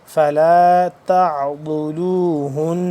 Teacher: زبان کی جو بائیں کروٹ ہے اس کو آپ نے اوپر والی جو داڑیں ہیں ان کے ساتھ جب لگائیں گے تو صحیح طرح سے ادا ہوگا ضاد اپنے مخرج سے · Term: ضاد کا مخرج